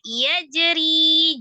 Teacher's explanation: ri-nya mad tabi'iyah, ya sukun sebelumnya kasrah, ra-nya dibaca tipis karena kasrah · Yajri, jim sukun qalqalah sughra di tengah